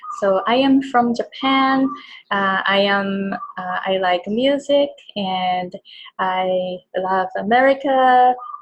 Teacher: the voice is really like Japanese when you speak English because the back of the tongue is up